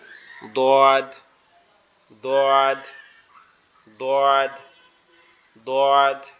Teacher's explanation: আমাদের জিহ্বার গোড়া উপরের মাড়ির দাঁতের গোড়ার সঙ্গে লাগবে, লেগে উচ্চারিত হবে